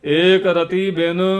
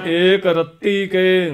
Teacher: ਪਹਿਲਾ ਰੱਤੀ ਸ਼ਬਦ ਪੋਲਾ ਜਿਹਾ ਬੋਲਣਾ ਰਤੀ ਦੂਜਾ ਰੱਤੀ ਅਧਕ ਲਾ ਕੇ ਬੋਲਣਾ